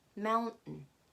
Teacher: So the T that is at the end of the word, we don't pronounce it.